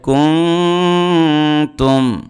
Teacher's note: নুন সাকিনের পরে তা আসছে ইখফা গুন্না হবে